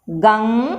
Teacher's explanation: तो आपके गले से और नाक से दोनों से ध्वनि निकलती है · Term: अनुनासिक